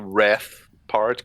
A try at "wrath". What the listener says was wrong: It sounded like you were saying res. No, wrath.